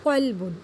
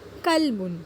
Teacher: آپ دونوں میں دیکھ سکتے ہیں کہ صرف پہلے حرف کا فرق ہے، قاف کاف۔ پہلے قاف کو ہم موٹا پڑھتے ہیں اور نیچے والے کاف کو ہم باریک پڑھتے ہیں